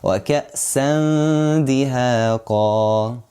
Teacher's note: It is a light one. So we make the ghunnah light. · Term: light غنة